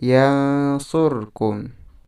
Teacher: Nah, di situ nun sukun dibaca samar karena nun sukun bertemu dengan huruf shad. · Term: ikhfa